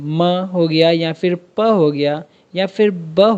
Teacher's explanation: When the two lips come closer the bilabial sounds are produced. फॉर instance sounds like म एंड प।